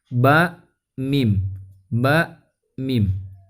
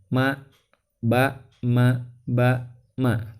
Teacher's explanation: Ba mim. Nah, huruf ba dan mim ini berdekatan tempat keluar hurufnya teman-teman. Karena sama-sama keluar di antara bibir ya, dua bibir ya, atau permukaan bibir.